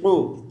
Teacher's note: قاف کو ہم فل موٹی آواز کے ساتھ پڑھیں گے